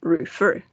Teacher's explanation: El golpe de voz está en la última sílaba. Refer. No decimos refer.